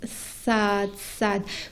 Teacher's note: il faut vraiment avoir beaucoup de volume de la langue dans la bouche et ne pas avoir beaucoup de vide entre la langue et le palais. Et aussi, il faut que le bout de la langue touche les dents inférieures centrales pour pouvoir prononcer ça, ça.